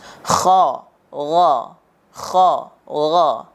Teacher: bunyinya terdengar seperti ketika kita sedang membersihkan tenggorokan kita, semakin bunyinya terdengar, maka akan semakin bagus.